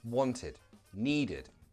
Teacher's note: For example, wanted, needed. Want ends in a t, need ends in a d. For that reason, the ed will sound like id.